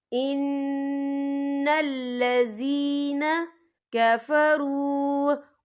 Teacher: یہاں پہ یا مدہ ہو رہا ہے، یا ساکن ہے، یا ساکن سے پہلے زیر ہے، تو یہاں ہم 2 یا 3 حرکت کے برابر کھینچیں گے